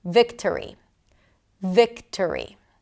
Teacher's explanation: The second syllable is a reduced vowel, and therefore we pronounce a schwa there. So even though it's spelled with the letter O, we don't pronounce the O.